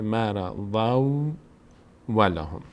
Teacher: بعد از تنوین یکی از حروف یرملون هست، تبدیل میشه تنوین به واو